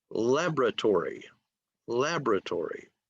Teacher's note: a word that has 5 syllables, accent, or the stress is on the first syllable.